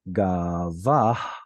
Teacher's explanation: The preceding vowel is an ah sound, so you don't need a furtive patach there. Your mouth is already in the right position, ready to pronounce that guttural.